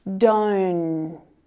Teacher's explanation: without that stopped T sound, that nasally N sound continues for longer